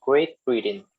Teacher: Great Britain has the 2 glottal stops